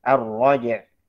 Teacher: Nah, jadi jimnya tetap qalqalahnya terjelas. Sifat bainiyah atau tawassut ain juga tetap jelas.